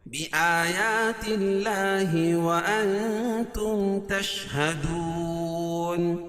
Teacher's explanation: اللہ کے لام سے پہلے زیر ہے تو اللہ کا لام باریک پڑھا جائے گا